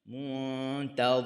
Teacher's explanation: Dengun nun di sisi huruf ta. Huruf d hujung lidah di hujung gigi atas.